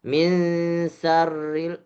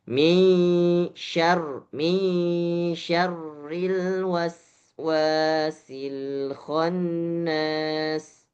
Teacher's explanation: Sya-nya kurang lebar, desisnya kurang tersebar, ya. Sya-nya itu harusnya angin yang ketika kita membaca huruf sya itu keluar dari berbagai arah. Ya, depan, samping itu huruf sya.